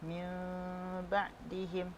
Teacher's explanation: nun mati berjumpa dengan ba, hukumnya iqlab, dibaca secara dengung, dan cara bacaannya seakan-akan menyebut huruf mim, akan tetapi bibir tidak bersentuh